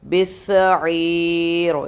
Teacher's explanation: یائے مدہ پہ پوز کریں گے تو مد عارضی لگا کے اس کو 3 الف تک پل کر سکتے ہیں